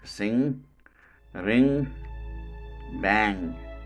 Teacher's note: Manner of articulation is nasal, as the above 2 nasal sounds, and the quality is voiced. This sound is called velar voiced nasal consonant sound. This sound generally or never occurs in the beginning.